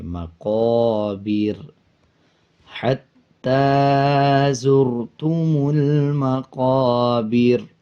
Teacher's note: جب وقف کریں گے تو را کو باریک پڑھیں گے